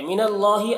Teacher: اللہ کے لام کو پر پڑھیں گے